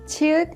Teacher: 치읓 is an aspirated sound with the burst of air